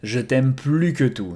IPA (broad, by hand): ʒə tɛm ply kə tu